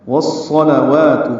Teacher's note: ادغام شمسی ہے، الف لام نہیں پڑھیں گے یہاں پہ، صاد پر پڑھیں گے، لام کو جلدی پڑھیں گے۔